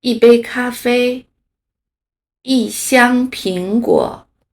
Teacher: 当一的后面是一声、二声、三声的时候，一从原来的一声变成四声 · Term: 变调